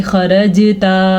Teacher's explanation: जीम पे साकिन है तो जीम पे कलकला होगा, जीम पे झटके की कैफियत होगी